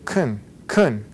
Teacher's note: The a becomes what we call a schwa, which is like a softened a.